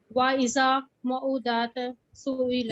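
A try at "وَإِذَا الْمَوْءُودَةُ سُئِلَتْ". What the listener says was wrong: इज़ा नहीं है, इज़ल है ना, मिलाएंगे ना साथ। वाइजल मऊदा तो सुइलत।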